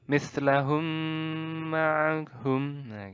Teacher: menyuarakan suara mim rangkap atau ditasydidkan dengan samar-samar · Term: Idgham mislain